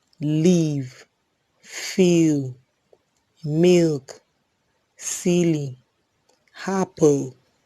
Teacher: The next is the alveolar lateral sound. This sound is a voiced alveolar lateral